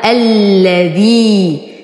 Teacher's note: الذي يا ساكنة ما قبلها مكسور فهو مد طبيعي حركتين